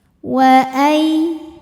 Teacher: ada harfu lin, sebab ada ya sukun didahului fathah, maka dibacanya lembut